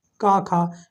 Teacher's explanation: का वर्ग के जितने भी वर्ण आते हैं सब कंठ से बोले जाते हैं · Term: कंठ ध्वनियां